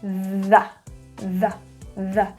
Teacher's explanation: The voiced TH, we place our tongue out, airflow is coming out, and we are adding our voice. So there's a vibration.